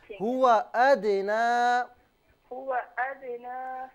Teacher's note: قال أتستبدلون الذي، اچھا اس کے بعد جو ہے ہوا ادنا، اس میں آپ نے ہوا کے واو کو تھوڑا کھینچا تھا، اس میں واو کو بالکل بھی نہ کھینچیں